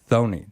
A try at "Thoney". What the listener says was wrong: the H is silent it's Tony Tony